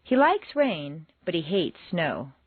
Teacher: Like and hate are contrasted and are the stronger words in the sentence.